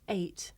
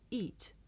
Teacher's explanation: it may be difficult to tell the difference between this diphthong a and the long vowel e